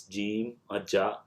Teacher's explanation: The Jeem is a voiced alveolar affricate like the English word J. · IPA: /dʒ/